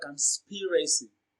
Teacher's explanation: So, the second syllable, sp, receives the stress. It is pronounced louder and longer